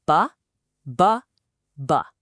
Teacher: all the air is coming out of your mouth. That's because the vellum is up, blocking the path to your nose.